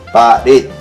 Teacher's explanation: efectivamente la fuerza de voz está en la última sílaba, igual que ciudad, efectivamente, aquí está la mayor fuerza de voz, pero no le he puesto tilde.